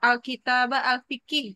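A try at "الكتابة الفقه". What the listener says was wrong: Berarti kalau ini yang saya koreksi adalah di kata Alkitab tadi mesti bilangnya Alkitabah ya, Alkitabah Al-Fiqih. Oke, ini saya ini Al-Fiqihnya. Al-Fiqih.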